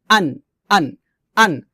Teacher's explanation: হামজাটা আমরা হলকের শুরু থেকে সাধারণভাবে নরমাল করে উচ্চারণ করব